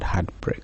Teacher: Then lastly we have spondaic pattern, where we have 2 unaccented syllables, and this is illustrated in the word heartbreak. Both syllables are stressed.